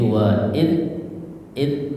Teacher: Jadi sifatnya dal itu adalah aljahru ya. lawannya alhamsu hames ya. Jadi pastikan dia tidak ada angin ya dari ee keluar dari mulut kita.